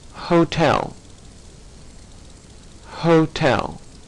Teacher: breathed out through the glotus and epig glotus say hotel hotel the sound H that H makes is coming right from your throat